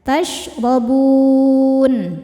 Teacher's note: Huruf yang disukunkannya nun. Maka bnya panjang boleh dua atau empat atau enam harakat asal konsisten dalam sekali baca. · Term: mad arid lukun